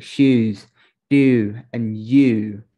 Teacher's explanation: The tongue is the front of the mouth, but not the very center. It sounds a little like French U.